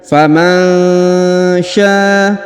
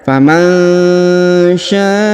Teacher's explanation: huruf nun sukun bertemu huruf sya maka didengungkan dan disamarkan